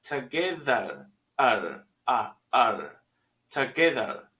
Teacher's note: Hay un schwa en together at the end, al final. No es ER, together, es together.